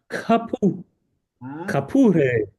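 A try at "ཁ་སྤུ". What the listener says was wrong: That's it.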